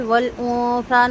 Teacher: نون ساکن کے بعد تا ہے، باریک اخفا کریں گے۔